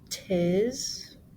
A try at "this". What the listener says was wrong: Oh, close. There's an H. So, how do we pronounce TH?